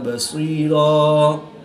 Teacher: وقف کی حالت میں الف مدہ سے تبدیل کر کے پڑھیں گے، یعنی ایک الف ان دو حرکات کے برابر کھینچ کر پڑھیں گے وقف کی حالت میں۔